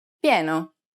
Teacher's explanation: When I precedes another vowel, it takes on a y sound.